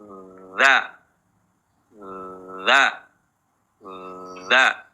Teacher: makhraj huruf dalal ujung lidah bertemu ujung gigi di seri atas · ada suara yang mengalir atau namanya rakho rakhawah namun nafasnya ditahan tidak keluar napas · nah hati-hati tapi bukan EZ dza dza suaranya yang mengalir duluan sifat huruf dza yaitu jahr yaitu tertahannya nafas ketika mengucapkan hurufza nafas jangan keluar tetapi apa ditahan